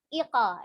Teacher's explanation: Huruf qaf sendiri termasuk adalah huruf yang isti'la, huruf yang tebal. Maka ketika memantul bukan ike, tapi iqa ya, iqa. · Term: qalqalah